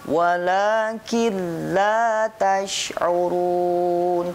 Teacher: Hanya 2, lam dan ro, ya. Ketika ada nun sukun atau tanwin bertemu lam dan ro, maka tidak dibaca gunah atau mendengung, cukup jelas saja. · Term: idgham bila gunah